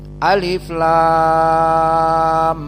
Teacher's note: mereka membaca dengan al-imalah al-kubro mendekati kasrah